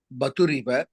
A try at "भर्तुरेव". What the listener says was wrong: भर्तुरेव भर्तुरेव भर्तुरेव तकारस्य उपरि रेफस्य चिह्नः अस्ति, पश्यतु। भर्तुः एव भर्तुरेव।